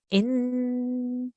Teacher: we have to kind of make the air blow out of our nose a little bit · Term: nasal sound